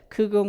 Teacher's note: 일단 공기가 막혔다가 이것이 탁 릴리스 터지면서 파열을 일으켜요. 그래서 플로시브라고도 합니다. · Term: 스탑 사운드